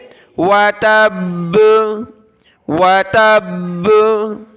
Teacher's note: بالکل با پر رک نہیں جانا، اسٹاپ نہیں کر دینا، بلکہ قلقلہ کی صورت میں رکنا ہے۔